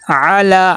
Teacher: عین کے اوپر زبر ہے، عین کو لمبا نہیں کرنا، حرکات غیر مدہ میں سے ہے